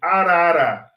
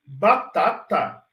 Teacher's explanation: eu faço uma alteração no fluxo de ar mas eu não paro o fluxo de ar mas se eu falar batata eu paro o fluxo de ar e explodo